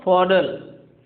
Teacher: क्योंकि देखो RT becomes a D, RT becomes D in American English